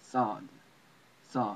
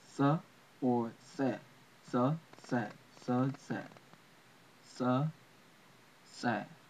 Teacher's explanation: But linguistically, it's more properly pronounced in origin as a s sound. It's like you put your teeth together and you pronounce a hard s sound almost like a t. It's like at the end of the word cats or bats or rats.